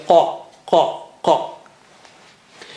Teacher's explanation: And how do you say qaf? Touch the inner part of the tongue to the roof of the mouth right at the back, behind the uvula.